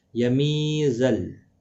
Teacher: یا مدہ ہے، ایک الف کی مقدار کے برابر کھینچ کر پڑھیں گے